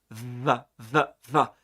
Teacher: it's pronounced with a lower lip V and the upper front teeth